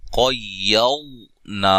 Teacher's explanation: پہلے قاف ہے، اس کو موٹا کریں گے، پھر واد کو بھی موٹا ادا کریں گے، اور یہ الف مدہ ہے.